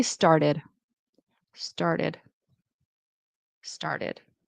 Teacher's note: I would pronounce this T as a D, as a flap T.